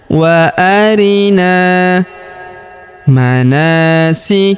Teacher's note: Huruf na kita panjangkan dua harakat karena terdapat alif di depannya.